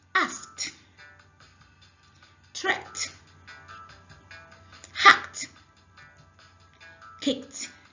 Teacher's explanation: This is another example of ed having t. When ed comes after verb that ends in k, then that ed is pronounced as t.